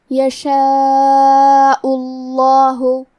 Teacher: لفظ الجلالہ مطلب کلمت اللہ کے لام کو بھاری آواز میں پڑھیں گے